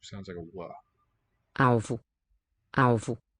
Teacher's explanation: The L here after vowel O alvo. sounds like a w.